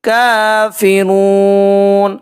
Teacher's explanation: واو ساکن اور اس سے پہلے پیش ہے، یہاں پہ واو مدہ کا قاعدہ اپلائی ہو رہا ہے، ہم نے 1 الف کے برابر کھینچ کر ادا کرنا ہے